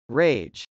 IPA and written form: rˈeɪdʒ (rage)